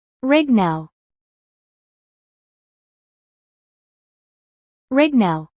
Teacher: The final T nearly disappears.